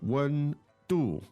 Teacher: 温度 and the first tone and the fourth tone